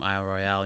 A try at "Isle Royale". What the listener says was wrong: Sounds like you're saying Iowa Royale.